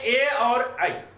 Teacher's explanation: अब ये दोनों तो एक ही जगह के हैं, कंठ ताल, माने कंठ और ताल दोनों मिल करके दोनों से निकले हैं, दोनों इनके उच्चारण स्थल हैं।